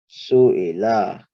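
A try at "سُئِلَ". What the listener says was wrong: Make sure the la at the end is for the same timing as the other strokes, okay? Just one count. Su'ila.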